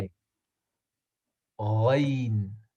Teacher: the place where it is pronounced is from, like, the, where the place where we gargle after we brush our teeth. Uh-huh. That's where the Ghain comes from.